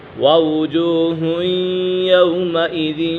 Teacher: الی ربها ناظرہ ووجوہ یومئذ باسرہ، ووجوہ یومئذ، یہاں پر ادغام یرملون ہوگا کیونکہ تنوین کے بعد حروف یرملون میں سے یا گئی ہے تو یا ادغام یرملون ہوگا، یعنی غنہ کر کے پڑھیں گے۔